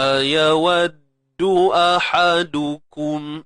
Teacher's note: Hamzah sekali lagi pangkal kerongkong kita